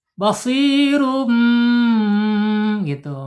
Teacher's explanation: Iqlab ya harus ditahan dua harakat.